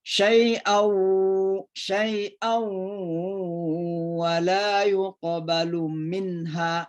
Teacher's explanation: Ya, ini ada gunna ketemu dengan wa namanya idgham bi gunna. Jadi didengun-dengunkan suara n-nya masuk ke huruf waw.